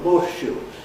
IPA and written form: ˋhɔːʃʃuː (horseshoe)